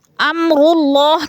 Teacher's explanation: امر اللہ کی اللہ پر پڑھی جائے گی، اس لیے کہ اللہ سے پہلے لفظ را کے اوپر پیش ہے تو اللہ کو پر کر کے پڑھیں گے۔